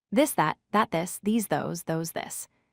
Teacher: your tongue position is the same as the voiceless sound and you should feel the buzzing. The key difference is simply the vibration in your vocal cords. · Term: voiced th